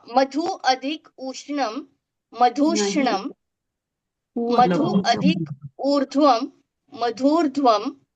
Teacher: ऊ अथवा ऊ च्या पुढे ऊ अथवा ऊ आल्यावर ऊ होतो, म्हणजे ते दीर्घ ऊ होतो.